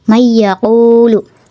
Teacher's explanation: meleburkan nun sukun ke huruf berikutnya dan disertai ghunah yang dipanjangkan du sampai 3 harakat contohnya nun sukun bertemu ya May yaquulu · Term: idgham bunah